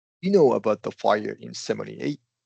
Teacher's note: Uh but so you're you're going to want to >> emphasize no and then end on an up pitch. Right? Because it's a question.